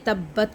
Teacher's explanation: سب سے پہلے تبت کو دیکھیں، تا کو با کے ساتھ، پھر با کو تا کے ساتھ، ٹھیک ہے۔ یہاں پر مشدد سائن کا مطلب کیا ہوتا ہے کہ یہ جو با ہے یہ 2 بار ادا ہوگا